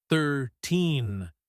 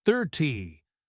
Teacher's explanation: 13 has the stress on the second syllable, 13, while 30 has the stress on the first syllable, 30.